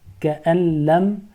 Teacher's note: Why the second noon in كأن لم is not pronounced? Because it is followed by one of the letters of Yarmalun. So it is assimilation, idgham.